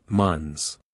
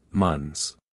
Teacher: again the th sound followed by an S is too difficult pronounce this word without the th sound just say months